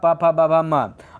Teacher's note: अच्छा पापा बाबा यहाँ सट रहा है होठ में, तो इसका आवाज़ होठ से निकलेगा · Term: ओष्ठ